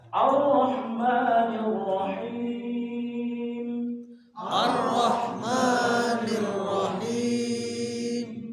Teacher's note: Ini Ar-Rahman semuanya jadi tafhim, semuanya tebal.